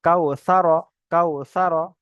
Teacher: ওয়াউলিনকে নরম আওয়াজে তাড়াতাড়ি পড়তে হয় টান দেওয়া নিষেধ